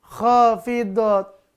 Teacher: itu dia Idam Bil gunah ini ya Idam Bila gunah ya lebur masuk tanpa dengung apa yang dileburkan bunyi tanwinnya